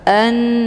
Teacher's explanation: kalimat Anna hamzahnya dileburkan ke dalam huruf nun dengan cara ditekan kemudian ditahan lebih kurang dua kali ketukan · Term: ghunah musyaddadah